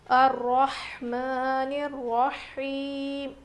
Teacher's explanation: ہا کی آواز بالکل ظاہر ہونی چاہیے، رو موٹا پڑھیں گے، کھڑا زبر ہے میم کے اوپر. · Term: بڑی ہا